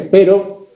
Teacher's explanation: caso tenemos una vibrante múltiple en el perro contario sus familiares mientras que pero la conjunción tenemos una vibrante simple